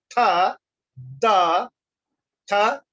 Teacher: dental or interdental, that is between the teeth